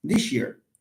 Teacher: The glide attracts the place of articulation of S and makes it sh. An excellent case of palatalization, but from a phonological perspective.